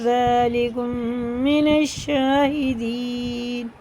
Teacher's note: قالوا اجئتنا بالحق ام انت من اللاعبین، قال بل ربكم رب السماوات والارض الذي فطرهن، تو بھی پورے را بھی پورے ہیں، فطرهن وانا على ذلكم من الشاهدين، میم ساکن کے بعد میم ہے، یہ ادغام شفی ہے، یہاں غنہ کر کے پڑھا جائے گا، اور یہ الف لام بالکل نہیں پڑھے جائیں گے، حرف شمسی میں سے یہ نون سیدھا شین میں لگے گا